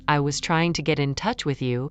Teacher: the main beats may fall on trying, touch, and you, depending on intention.